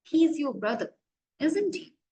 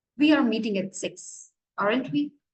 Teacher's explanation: falling intonation it means our pitch is low little bit lower than that Rising one